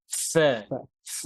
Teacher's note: ফা পড়ার সময় উপরের দাঁত নিচের ঠোঁটে লাগবে, এখান থেকে বাতাস বের হবে